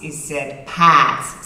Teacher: But dissimilar to a lot of American, the R's, which are normally rolled, aren't unless they're followed by a vowel